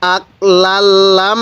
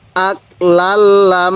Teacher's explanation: নাকের বাঁশি দ্বারা গুনাহ করব কারণ মিমে নুনে তাসদিদ গুন্নাহ করা ওয়াজিব